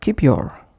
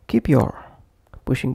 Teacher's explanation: Pushing P into Y of your.